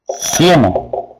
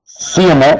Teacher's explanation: En la palabra cieno, la E tiene la mayor fuerza de voz, entonces estoy frente a un diptongo creciente.